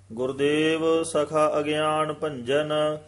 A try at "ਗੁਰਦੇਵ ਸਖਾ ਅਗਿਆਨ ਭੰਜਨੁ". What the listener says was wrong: ਗੁਰਦੇਵ ਸਖਾ ਅਗਿਆਨ ਭੰਜਨ, ਸਖਾ ਤੇ ਲੱਗੇਗੀ ਠਮਕ। ਸਖਾ ਅਗਿਆਨ ਦਾ ਸੰਬੰਧ ਨਹੀਂ ਹੈਗਾ।